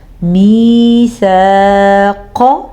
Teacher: الف سے پہلے زبر ہے تو کھینچ کے پڑھیں گے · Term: الف مدہ